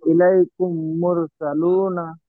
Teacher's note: মিম সাকিনকে মিমের সাথে মিলিয়ে গুণনা করে ইয়াকালি পরিমাণ গুণনা করে পড়তে হয়। একে ঈদগামের স্বাভাবিক বলা হয়। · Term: ইদগামে সাফাবি